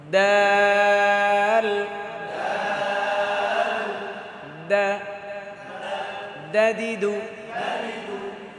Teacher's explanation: তারপর দাল জিহ্বার আগা দাঁতের গোড়া · জিহ্বার আগা দাঁতের গোড়া। দাল, দা, দাদিদু, একদম স্পষ্ট।